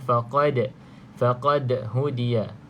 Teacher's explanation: Okay, kemudian kita nampak huruf dal yang ada sukun huruf dal adalah huruf qalqalah, maka kita lantunkan di sini lantunan yang sedikit, yang kuatlah